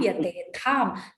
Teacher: The tha is Mahaprana. Don't miss it.